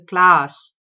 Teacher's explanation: the vowel sound there is a and it's the long vowel ah